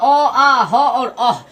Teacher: अ आ ह और अह, इन सब का उच्चारण स्थान कंठ होता है